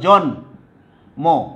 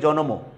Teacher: যদি মূর্ধন্য বা দন্তান্ন নয়ের সাথে মফলা যুক্ত থাকে তাহলে কি হবে, ময়ের উচ্চারণটা অবিকৃত থাকবে